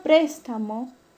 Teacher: la mayor fuerza de voz recae en la antepenúltima sílaba. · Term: esdrújula